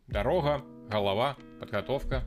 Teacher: One of the most unique features is something called gekanye, where the usual g sound becomes a fricative r. Дорога, голова, подготовка.